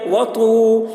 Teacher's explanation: واو ساکن سے پہلے پیش ہے، واو مدہ ہوا، اس لیے واو مدہ کو ایک الف کے برابر کھینچ کر پڑھیں گے